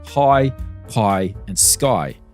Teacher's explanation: new zealanders with a broader accent pronounced this sound in a way that sort of rhymes with toy but not exactly the same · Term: I sound